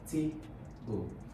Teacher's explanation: Now, the stress on table, you can see, is on the primary stress is on the first syllable